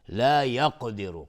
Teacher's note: را مفخم هست، حکمش استعلاست چون ضمه داره